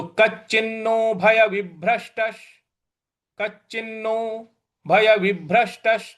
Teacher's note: ठीक है यहां पर विसर्ग नहीं है तो विभ्रष्टस यहां पर जो आधा श है उस पर भी हमको आघात देना है